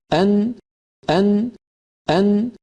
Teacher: مثال کے طور پہ ہم میں جب کوئی کہتا ہے کہ ال، ال ال، اور پھر کہتا ہے ان، أن وہ تھوڑا نیچے ہے اس جگہ جہاں لام کے لیے زبان لگتی ہے، لہٰذا نون اس طرح ادا ہوتی ہے کہ زبان کا ابتدائی اوپر والا حصہ اپنے بالمقابل مسوڑوں کو جو لام کے مخرج سے تھوڑا سا نیچے ہے لگنا چاہیے، اور ساتھ ناک سے بھی آواز گزرے۔ یہ دونوں چیزیں مل کر نون کو تشکیل دیتے ہیں اور یہی نون کا مخرج ہے۔